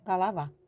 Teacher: Vurğu A-ya düşdüyü üçün bu ilk o a kimi oxunur.